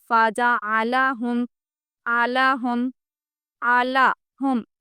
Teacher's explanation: فا جیم عین، عین حلق سے آنا چاہیے. اگر آپ یہاں پر عین حلق سے آواز نہ نکالیں تو یہ جب اپن قرآن پاک میں پڑھتے ہیں تو یہ حمزہ یعنی کہ الف کی آواز آئے گی تو یہاں پر بھی معنی غلط ہو جائیں گے.